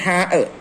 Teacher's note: തൊണ്ടയുടെ മധ്യം. ഇവിടെ നിന്ന് കാറ്റോട് കൂടി പുറപ്പെടുന്നു.